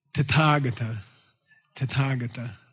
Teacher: When you see th in a Sanskrit word, you're supposed to breathe heavy